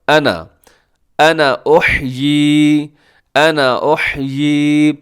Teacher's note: انا کے ساتھ الف ہے لیکن ہم اس الف کو پڑھتے نہیں ہیں